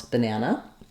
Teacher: the middle syllable is longer, and it has the clear vowel. The first and last syllables are shorter in duration, and they have reduced vowels that sound like banana, banana.